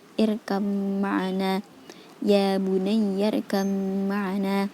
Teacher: pada huruf ba dan mim dihukumi idgham mutaqaribain, tetapi dengan suara dengung. Cara membacanya seperti membaca irkam ma'ana.